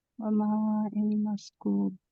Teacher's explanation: واؤ مدہ ہے, اسے ہم 2 سیکنڈ کے لیے لمبا کریں گے